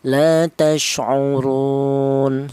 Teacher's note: Wajah yang ketiga itu namanya qasar, yaitu artinya pendek, yaitu panjangnya 1 alif atau 2 harokat atau 2 ketukan